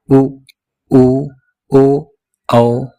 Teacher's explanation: जिन स्वरों के उच्चारण में होंठ गोलाकार हो जाए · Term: वृत्तमुखी स्वर